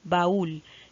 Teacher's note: recae sobre la vocal cerrada la mayor fuerza de voz